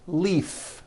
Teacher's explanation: leaf, like from a tree, which has an unvoiced F.